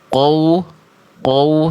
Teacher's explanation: Jadi qof-nya fathahnya belum jelas. Udah terbawa monyongnya huruf wau